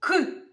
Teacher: третій звук к він короткий приголосний твердий